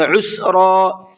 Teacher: یہاں پر عین ہے، عین نکال کر کے پڑھیں گے